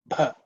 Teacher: This bha is the 4th letter in the pa varga, so it has to be aspirated.